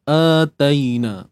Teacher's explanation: untuk A ni kita baca dengan dua harakat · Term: mad badal